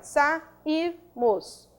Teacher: Quando eu separo a sílaba, eu tenho sílaba tônica ir, penúltima sílaba, sairmos. Agora, é um hiato, separou-se, ó lá, do A, e nós temos hiato tônico em I seguido de R.